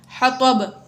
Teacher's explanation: حطب میں آخر میں با ساکن ہوگی، حروف قلقلہ میں سے با ہے تو اس میں قلقلہ ظاہر کر کے پڑھا